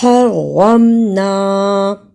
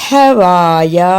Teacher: پہلی ہا کو ہائی کی طرح نکالنا ہے، ہا دو. دوسری ہا کو حلق سے رگڑ کر نکالنا ہے